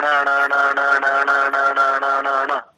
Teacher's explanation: अब जब आप अण बोलते हैं तो देखो अंतिम ध्वनि में जो आपका स्पर्श है ना, तो जिह्वा आकर के जैसे पटकते हैं ना, कपड़ा पटकते धोबी, उस प्रकार से पटक रही है जिह्वा मूर्धा में जाकर के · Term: मूर्धन्य जो णकार है